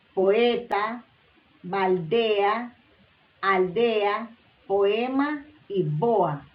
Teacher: la mayor fuerza de voz en la penúltima sílaba